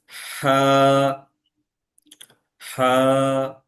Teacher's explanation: আমি হাটা উচ্চারণ করছি ঠিক গলার মাঝে, মাঝ থেকে বাতাস বেরোচ্ছে এবং কিছুটা শ্বাস বেরোচ্ছে, বাতাসটা বের হয়ে যাচ্ছে।